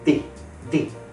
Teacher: some Spanish speakers always use the dental position to say their D sounds, which makes their D sounds sound a lot like hard the sounds.